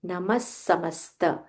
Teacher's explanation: So visarga followed by sa. When we join together, we say namas samasta. Stress on that sa a little more.